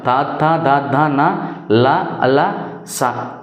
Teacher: దంతాల సహాయంతో పలికే వాటిని దంత్యాలు అంటాం